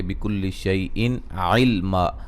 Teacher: نون تنوین کا اظہار ہے اور یہاں جب وقف کریں گے الف مدہ میں تبدیل کر دیں گے